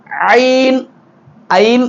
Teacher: தொண்டையின் நடுப்பகுதியில் சற்று முயற்சி செய்கிற பொழுது வெளியாகும்